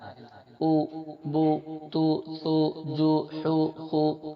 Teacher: پیش پڑھ رہے ہیں تو دونوں ہونٹوں کا کنارہ ملنا چاہیے اور بیچ کا حصہ کچھ کھلا رہنا ہے